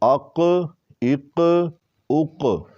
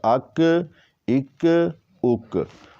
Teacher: اور قاف کو موٹا کریں گے، قلقلہ کریں گے، وقف کے وقت قلقلہ کی آواز زیادہ آتی ہے